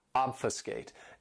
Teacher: This verb has 3 syllables and the stress is on that first syllable,